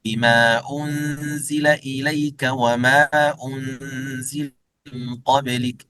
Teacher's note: يقصرون حرف المد، يعني يمدونه حركتين، فلا يزيدونه تمكينا على ما فيه من المد. يعني حرف أصلي حركتين على ما فيه، يعني لا يزيدون على أصله مد الذي لا يوصل إليه إلا به، يعني المد الأصلي، المد الأصلي.